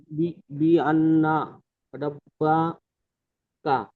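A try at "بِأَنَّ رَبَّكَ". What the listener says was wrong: এখানে গুণনা আরেকটু গুণনা করেন জি।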